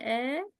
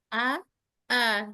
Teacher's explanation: Arahannya tidak terbuka terlalu lebar, tidak juga ditarik ke samping. Tidak E. Tapi A ke bawah.